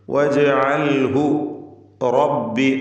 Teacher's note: ഹായിനെ ദീർഘിപ്പിക്കാതെ ഉച്ചരിക്കുകയാണ് വേണ്ടത്, കാരണം തൊട്ടുമുമ്പിൽ സുക്കൂനുള്ളതുകൊണ്ട്.